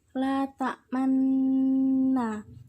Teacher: Ismam ialah bibir mencucu di tengah suara bunyi dengung sebagai isyarat bunyi dhamma.